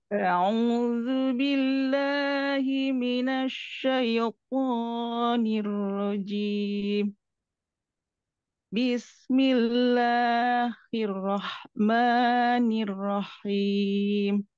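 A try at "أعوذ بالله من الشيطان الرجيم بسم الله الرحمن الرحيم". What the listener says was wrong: Jim sama him samain ya. Tadi jim panjangnya 2 ya. Kalau him barusan panjangnya 4.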